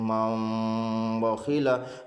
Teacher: تنوین یا نون ساکن کا قاعدہ نمبر 3، تنوین یا نون ساکن کے بعد با آئے تو نون کو میم سے بدل کر گنہ اور اخفا کے ساتھ پڑھیں گے، اس کو اقلاب کہتے ہیں۔